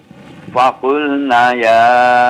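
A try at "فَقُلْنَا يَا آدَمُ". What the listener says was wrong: Fakulna ya, panjang 2 harakat.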